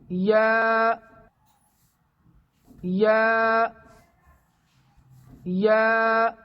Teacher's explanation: ये ज़बान के बीच वाले हिस्से को तालू के बीच वाले हिस्से तक ले जाकर अदा होता है। जो मखरज जीम और शीन का है वही मखरज या का है, सिर्फ सिफत यानी अदा करने के ढंग यानी तरीक़े में फ़र्क है।